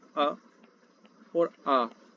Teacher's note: अ और आ यह जो स्वर है यह भी आपके कंठ से बोले जाते हैं